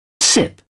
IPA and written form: sɪp (sip)